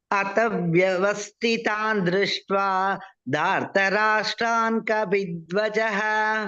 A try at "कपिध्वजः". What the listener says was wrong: कपि is not there कपि प प प भ first प कपिध्वजः once more